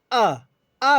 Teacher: जब आ बोलेंगे तो जीभ का कहीं ना कहीं पीछे वाला हिस्सा आपका ऊपर उठेगा, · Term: पश्च स्वर